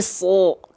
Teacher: Keluarnya vokal O kan? Karena dia huruf yang tebal.